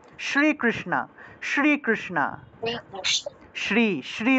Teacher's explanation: অর্থাৎ আপনার জিহ্বাটা মূর্ধা অর্থাৎ উপরের তালুর সাথে যুক্ত স্পর্শ করবে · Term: মূর্ধন্য